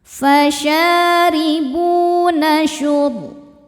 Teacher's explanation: ra sukun dibaca secara tafkhim karena sebelumnya berharokat di atas yaitu dhammah. Cara membacanya ditebalkan.